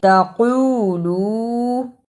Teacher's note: تقولو قاف کو موٹا پڑھنا ہے، تقولو، اسے تقولو نہیں پڑھنا، قاف کی جگہ پر کاف کی آواز نہیں آنی چاہیے